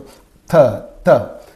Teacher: In the production of these consonantal sounds, the tongue will touch the upper teeth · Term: dental